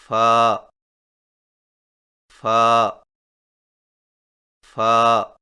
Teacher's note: فا کی ادائیگی میں سامنے والے اوپر کے دو دانتوں کے سروں کو نچلے ہونٹ کے گیلے حصہ پر لگا کر باریک آواز میں پڑھیں